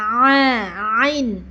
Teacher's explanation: Sekarang di tengah tenggorokan ain dan ha. Ain yaitu dia ada di tengah-tengah tenggorokan ya. Coba pegang tengah tenggorokan dan ini pengucapan ain kayak disakitin ya.